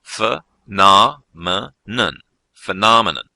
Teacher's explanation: This word is a noun, and as you can probably hear, it has 4 syllables, and the stress is on the second syllable